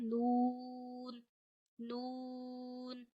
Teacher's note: जबान के किनारे और ऊपर के दांतों की जड़ों से अदा करते हैं।